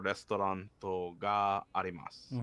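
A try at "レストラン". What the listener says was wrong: So in Japanese, just FYI, restaurant does not have the T at the end. It's just restaurant.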